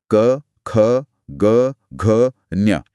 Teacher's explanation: अगर आप अभी बोल कर देखेंगे तो आवाज सीधा गले में वाइब्रेट करती है। राइट। जीभ कहीं भी टच नहीं हो रही है इसमें। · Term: क वर्ग